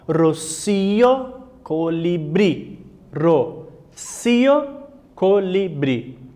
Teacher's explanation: en el primer haikus, la última sílaba es la más fuerte. Então a última sílaba é a mais forte, a sílaba tônica.